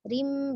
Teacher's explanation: Rim ditahan tetapi ro-nya dia tipis ya, karena dia tandanya kasrah tanwin di bawah, maka dia tipis. Rim, bukan rim, bukan rim, tapi rim ya.